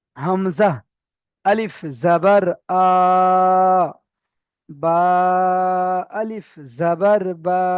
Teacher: আলিফ মাদ্দা একে এক আলিফ পরিমাণ টান দিয়ে পড়তে হবে